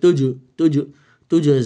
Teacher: অক্ষর তা আসছে হচ্ছে গুনাহ সহ প্রথমটা জিম পরেরটা জাই তো জিম হচ্ছে কলকলা হরফ এজন্য এখানে একটু ডব দেওয়ার মত পড়তে হবে